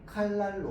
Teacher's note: 이 날의 니은이요 앞에 있는 리을을 만나가지고 리을로 바뀌어서 발음됩니다. 칼날로 바뀌어서 발음되죠. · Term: 유음화